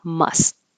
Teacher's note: Must, and you hold the T